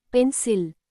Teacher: In the word pencil, the second part, cil, is unstressed. So the vowel I sounds light like a, not e. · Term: schwa